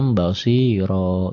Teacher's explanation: Dua garis ini. Dua fathah dibaca satu jika dihentikan. Tapi panjang satu alif. Ya, kayak mad tobi'i. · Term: mad iwad